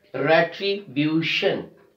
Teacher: We are stressing on the second last syllable, B-U, retribution, retribution.